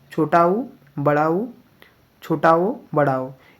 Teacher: इसको जब बोलते हैं तो इसमें ओठ गोल हो जाते हैं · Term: वृत मुखी